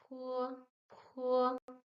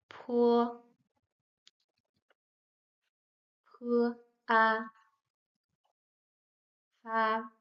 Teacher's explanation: like the English P, but we make air flow through our lips.